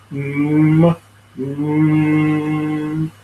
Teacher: You'll find a little bit of vibration on your lips.